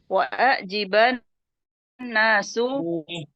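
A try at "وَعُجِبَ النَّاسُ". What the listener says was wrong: Dhammah. Dimajhulkan.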